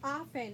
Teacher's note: there was that t sound that really didn't show up, like it was kind of like a silent letter